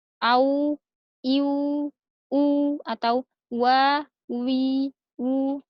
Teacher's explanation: Jadi huruf waw mau dia berharokat fathah, kasroh, dhammah, atau sukun, dia harus, dua bibirnya membentuk bulatan